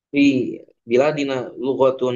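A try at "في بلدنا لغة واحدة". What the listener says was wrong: Baladina, bukan bilad, balad. Kan tidak pakai alif.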